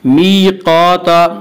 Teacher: میقاتا یا مدہ وہ یا جو ساکن ہو اس سے پہلے زیر ہو، یا مدہ کو ایک الف کے برابر کھینچ کر پڑھیں گے۔ میقاتا قاف کو پر پڑھیں گے، قاف حروف مستعلیہ میں سے ہے، حروف مستعلیہ 7 ہیں جو ہمیشہ ہر حال میں پر پڑے جاتے ہیں۔